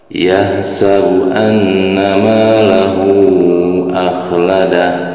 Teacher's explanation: Yahsabu an ini ada nun bertasydid, hukum bacanya yaitu guna ya, guna musyaddada. Jadi harus ditahan 2 fathah ya, ada dengungan.